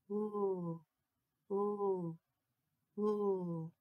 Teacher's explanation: the letter L sounds like o ooh make sure your tongue is behind your teeth